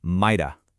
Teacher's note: might plus that weak uh sound gives you mighta